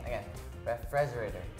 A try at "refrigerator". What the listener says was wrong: The emphasis is in the wrong place, but oh. The pronunciation is okay.